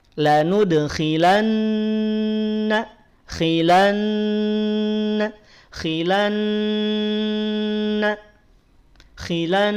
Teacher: ghunah itu lebih panjang dibanding dengan dua harakat kadar Mad asli